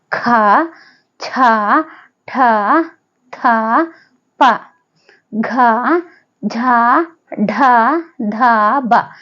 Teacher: ಬ ಇವುಗಳು 10 ಅಕ್ಷರಗಳಿವೆ ಇವುಗಳನ್ನ ಅಲ್ಪಪ್ರಾಣ ಅಂದ್ರೆ ಕಡಿಮೆ ಉಸಿರಿನಿಂದ ಉಚ್ಚರಿಸುತ್ತೇವೆ ಹಾಗೆ ಮಹಾಪ್ರಾಣಾಕ್ಷರಗಳು ಹೆಚ್ಚು ಉಸಿರಿನಿಂದ ಉಚ್ಚರಿಸುವ ಅಥವಾ ಬಾಯಿಂದ ಗಾಳಿಯನ್ನ ಹೊರಹಾಕ್ತಾ ಉಚ್ಚರಿಸುತ್ತೇವೆ